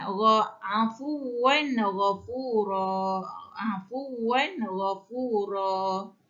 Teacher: tanwin baris 2 di atas bertemu dengan ghain. Hukum dia izhar halki, tidak boleh dengung